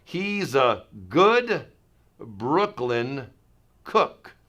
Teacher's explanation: Because of my B and the R there, my lips go out forward, so I want you to be very careful not to carry that lip forward motion with your lips into making a long oo sound.